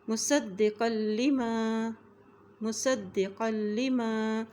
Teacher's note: قاف کی دو زبر کو ہم لام کے ساتھ ملائیں گے کیونکہ لام کے اوپر بھی شد ہے